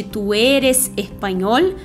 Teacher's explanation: o E e o O são mais fechados, não são abertos que nem no português